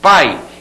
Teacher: que é uma semivogal é um som mais fraquinho então ó na palavra pai eu tenho a junção da vogal a e da semivogal i sai tudo junto né pai então esse elemento que eu circunde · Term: ditongo